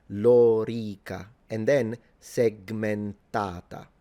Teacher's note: for those of you who are interested in Latin and the precise phonemic vowel length, this vowel, the O and the E, are both long